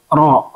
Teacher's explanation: Ro dia berulang tapi tidak boleh terlalu banyak getaran. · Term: takrir